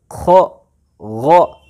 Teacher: ख और गैन का मखरज क्या हुआ, अदनाए हलक, यानी हलक का सबसे पहला हिस्सा, हलक का मुंह की तरफ वाला हिस्सा